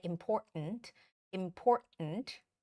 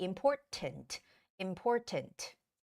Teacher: in British English it's okay to make that hard T sound